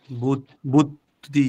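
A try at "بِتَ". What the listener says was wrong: বু কেন? প্রথমটা একটা উচ্চারণ করেন। বু বি বিতা হবে, বিতা কেন? জের আছে রস্বীকার, বিতা বিতা বিতা।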